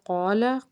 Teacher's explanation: قاف جو ہے وہ حروف مستعلیہ کا حرف ہے، اس کو ہم نے پر پڑھنا ہے